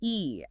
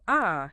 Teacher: Think about E as in C. Your tongue is high and forward. Now compare that to ah in cat. Tongue's lower, more relaxed.